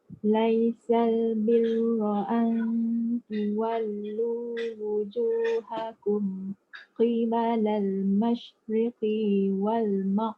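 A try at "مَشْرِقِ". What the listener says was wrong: Pendek je. Jangan riqi wal.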